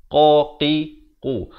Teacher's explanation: qa pula makhrajnya dipangkal lidah